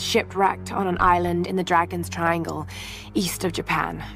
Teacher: her voice is much breathier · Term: breathy voice